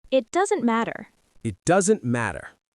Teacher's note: Doesn't has a soft T sound and matter too.